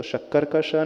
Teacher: ऊपर के तालू को टच करे, अपर जॉ को टच करे तो शक्कर का श निकलेगा